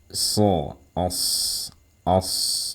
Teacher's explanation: as-safir, itu adalah mengeluarkan suara desis saat kita melafalkan huruf sod. Jadi desisnya seperti ini suaranya.